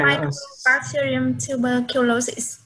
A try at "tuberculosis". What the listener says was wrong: So, slow down. When you say tuberculosis, you have to pronounce it slowly a little bit, like tuberculosis. So you have to, each word have to say, you have to pronounce it. So, you know, so tuberculosis, so every word has to be pronounced.